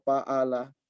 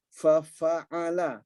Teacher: Seharusnya fa'ala, terbuka. Ya, keluar udaranya. Huruf fa-nya jelas. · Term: hamas